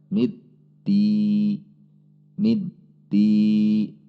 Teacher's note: ada berhenti sejenak karena memang sifatnya dari huruf dal